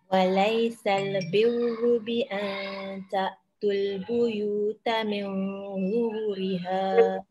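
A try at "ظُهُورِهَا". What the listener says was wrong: Zuhuriha panjang.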